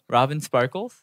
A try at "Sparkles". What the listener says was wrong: Yeah, you kind of have a lisp. But it's a little bit more pronounced when you say sparkles.